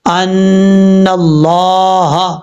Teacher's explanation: نون کو جب لفظ اللہ سے ملائیں گے تو بیچ میں الف اور لام کو چھوڑ دیں گے، ان اللہ، اس طریقے سے لفظ اللہ کے اوپر کھڑا زبر ہے، ایک الف کی مقدار لمبا کر کے پڑھا جائے گا، ہا زبر ہا، یہ ہا بھاری ساؤنڈ کے ساتھ پڑھا جائے گا۔ یہ بھاری ساؤنڈ کے ساتھ اس لیے پڑھیں گے کہ جس حلق سے یہ ہا ادا ہوتا ہے اس حلق کا تعلق سینے سے ہے، ان اللہ، اور یہ جو ہا ہے یہ حروف حلقی میں سے ہے۔